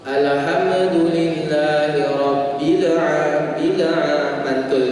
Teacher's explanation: Kemudian kesalahan yang kedua yaitu ketika sukun, ya, dipantulkan.